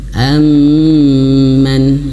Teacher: dua huruf ini mim Nun yang bertasdid itu wajib gunah ah tiga harakat ya tiga harakat ya ada yang mengatakan dua